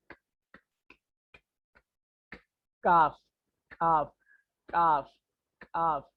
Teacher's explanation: काफ जहां से निकल रहा वो कॉफ के करीब से ही निकल रहा, यानी जबान के बीच में से।